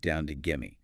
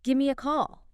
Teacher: give me is very frequently reduced down to gimme. It says something like, it's not overpronounced, but gimme.